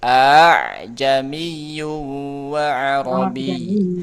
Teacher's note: A'jamiyun bisa dibaca dengan tashil, ya, meringankan hamzah yang kedua.